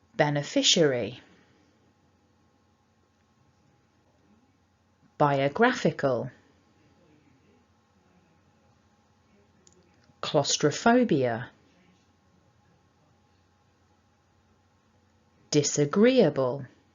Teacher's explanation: a primary and a secondary stress but the difference is here our secondary stress is on syllable one